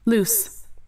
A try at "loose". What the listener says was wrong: U dài nè. U.